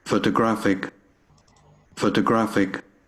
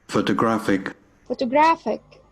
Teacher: So we have here the third syllable is stressed more strongly and more powerfully than the others.